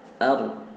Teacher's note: Ro itu dia memiliki sifat tebal ketika aru.